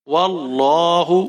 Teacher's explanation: واو کو لام کے ساتھ ملائیں گے، لام کو موٹا پڑھیں گے، کھینچ کر پڑھیں گے ایک الف کے برابر.